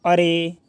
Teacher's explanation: प्लुत स्वर उसको बोला जाता है कि जिसको उच्चारण करने में और ज़्यादा समय लगे, ठीक है। यानी कि जैसे कि बोलते हैं हम लोग अरे, ठीक है।